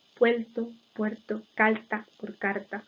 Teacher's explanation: Hay un intenso lambdacismo